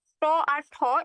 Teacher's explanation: ট আর ঠ এই দুইটা হচ্ছে অঘোষ ধ্বনি অঘোষ ধ্বনি কেন এই ট আর ঠ উচ্চারণের সময় দেখবা যে তোমার স্বরতন্ত্রী বা গলা কিন্তু তেমন কাঁপতেছে না